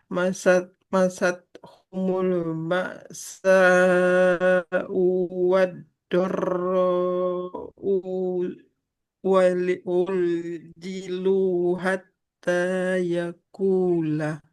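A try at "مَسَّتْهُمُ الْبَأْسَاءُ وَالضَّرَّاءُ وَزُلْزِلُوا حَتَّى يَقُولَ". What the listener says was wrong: Huruf sinnya kan ada tasdidnya ya. Harus dialirkan suaranya. Kemudian wadoro'u. Nah, kan hamzahnya doma.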